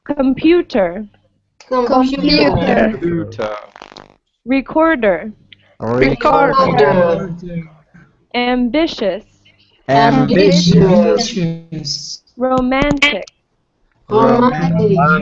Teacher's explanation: So now we have 3-letter words where the stress is in the middle.